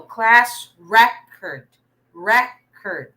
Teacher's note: the stress is in the first syllable because it's a noun